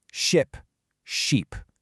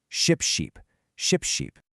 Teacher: Ship relies on that quick, relaxed I sound. Sheep demands that wide, held E.